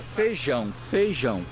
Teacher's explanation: em muitas regiões a vogal e quando está com outra desaparece